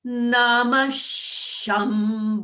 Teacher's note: on ve we begin at the middle note and then we go up